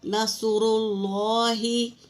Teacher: را کے اوپر پیش ہے تو پر پڑھیں گے